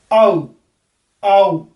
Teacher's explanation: आ बोलेंगे नीचे से पूरे ओपन से, और बाद में क्लोजिंग की तरफ हमारी जीभ जो है वो चली जाएगी। तो इन्हें क्लोजिंग डिप्थोंग्स बोलते हैं।